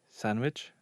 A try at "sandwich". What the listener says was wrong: Are you saying it with a D or a G? No, you're says it with a G as well. Putting a G into sandwich when they say sandwich.